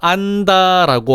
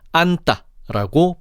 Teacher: 디귿이 니은의 영향을 받아 쌍디귿으로 교체가 되었어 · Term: 된 소리 되기